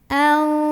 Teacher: nun sukun ini dibunyikan samar-samar menuju huruf fa. Jadi bukan anfi tapi au, sambil ada dengungannya. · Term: ikhfa